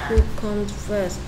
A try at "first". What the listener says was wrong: 발음은 first고요. first. 그렇게 들립니다. first는 fast가 아니고요.